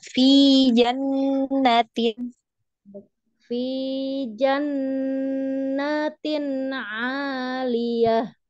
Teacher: Tidak ada mat, tidak ada mad. Betul panjang, gunnahnya panjang sudah betul. Tapi huruf fathahnya jangan dipanjangkan